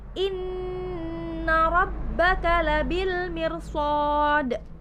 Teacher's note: Nun bertasydid itu masuk kedalam hukum ghunnah musyaddadah yang harus dibaca dengung